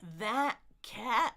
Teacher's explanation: cat is a very common word, so I'm going to glottal stop that because I have two of them.